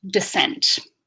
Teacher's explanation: when I make that schwa, there's almost no movement in my face whatsoever because that is a lax vowel or relaxed vowel